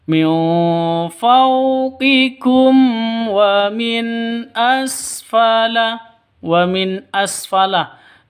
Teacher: nun mati bertemu dengan Hamzah jelas terang karena izhar halqi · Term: izhar halki